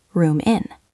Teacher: The m in room connects to the i in in